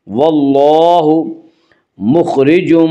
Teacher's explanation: مخرجم خا کو پر پڑھیں گے، خا حروف مستعلیہ میں سے ہے، حروف مستعلیہ 7 ہیں جن کا مجموعہ خص ضغط قز ہے، یعنی خا، صاد، ضاد، غین، طا، قاف، ضا، یہ 7 حروف ہمیشہ ہر حال میں پر پڑھے جاتے ہیں۔